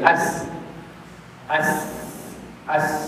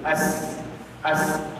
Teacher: tempat keluarnya adalah hujung lidah. Hujung lidah kita akan diletakkan dekat gigi kancip bahagian bawah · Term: huruf sin